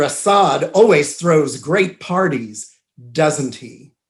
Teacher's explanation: when you hear that little tag question, isn't it, doesn't he, with falling intonation, that's not really a question. That is asking someone to agree with you, and a native speaker will know that you're expecting them to agree with you.